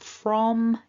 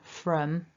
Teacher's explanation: different from is the strong and from is the weak so when i make the o of the strong o my lips are sort of a bit more circular and rounded at the front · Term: strong form